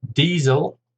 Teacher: Diesel, 2 syllables, stress on the first